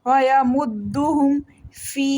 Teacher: یا مدہ ہے 1 سیکنڈ لمبا کریں گے